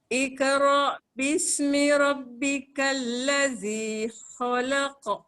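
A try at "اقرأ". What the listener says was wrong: Cuma sebutan qaf tu. Iqra, iqra, iqa. Jangan iqra. Sebab dia tebal. Qalqalah dah ada dah tapi dia tak tebal.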